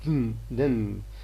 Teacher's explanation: in hidden, d and n are homorganic, which means they have got the same place of articulation. The air pressure built behind the stop closure is released through the nose by the lowering of the velum. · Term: nasal plosion